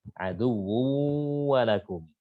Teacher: Kemudian yang pertama berharokat, yang pertama sukun, yang kedua berharokat, berarti shagir. Nah, masuknya secara sempurna enggak? Enggak. Karena masih menyisakan sifat gunnahnya, berarti dia nakis. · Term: idgham mutaqaribain shagir nakis